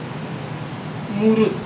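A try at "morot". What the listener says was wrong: Not mulut, not with L. R. R.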